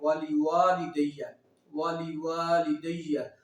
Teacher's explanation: واو پر ہم اس کو ایک الف یعنی دو حرکات کے مطابق کھینچ کے لمبا کر کے پڑھیں گے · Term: الف مد